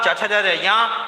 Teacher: चा वर्ग को हमने तालु बताया, क्योंकि ये जीभ के अगले भाग से बोले जाते हैं।